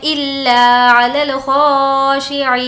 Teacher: عی کو کھینچیں گے، یا مدہ ہے اور یہاں پر وقف کرنا ہے اس لیے جزم دے دیں گے۔